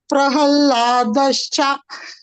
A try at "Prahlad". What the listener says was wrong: Prahlad. Not Hallad. Prahlad. Prahlad. Prahlad. Sanskrit is Prahlad only.